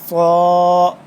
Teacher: اب نہیں پڑھ رہے، حمزہ با زبر اب نہیں پڑھ رہے، ہم حمزہ اس طرح پڑھ رہے ہیں، حمزہ با زبر اب، صاد الف زبر صا، صاد کو موٹا پر کر کے پڑھنا ہے اور سیٹی کی آواز سختی سے